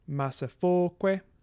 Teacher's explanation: So we have penultimate stress in this case, rather than anti-penultimate stress.